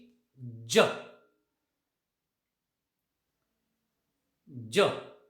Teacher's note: सुरुवातीला हवा थांबते, त्यानंतर घर्षण होतं जिभेचं आणि वरच्या भागाचं, टाळू आणि टित्रिच्यामध्ये. · So the first level of the sound j is voiced. The second level is palato-alveolar, and the third level once again is affricate.